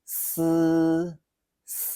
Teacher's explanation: Sounds like S. Much like the S in sky, it's unvoiced, so there's no throat vibration.